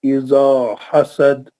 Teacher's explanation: اذا حسد میں دال آخر میں قلقلہ ہوگا، قلقلہ کبرا